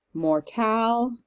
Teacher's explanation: Mortal, emphasis on the tal part of that word.